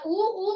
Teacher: तर ओठ, ओठ त्या वर्णाचं नाव आहे औष्ठ्य आणि यामध्ये उ आणि उ या दोन स्वर, उ उ म्हणताना आपले ओठ एकमेकांच्या जवळ येतात, म्हणजे ओठांचा ओठांशी स्पर्श होतो, म्हणून त्यांना काय म्हणायचं असतं, औष्ठ्य वर्ण म्हणायचं असतं.